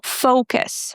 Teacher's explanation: We stress the first syllable. Focus. Make sure that you pronounce the oo completely in O, fo.